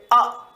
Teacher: जब हम बोलेंगे अ तो यह कहां से बोला जाएगा जीवा के मध्य भाग से